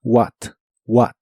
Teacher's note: la H de esta palabra ya no se pronuncia